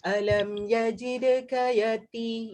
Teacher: ta selamba je kita boleh sebut, tak payah extra effort Alam yajidka yati, di hujung lidah pada gusi atas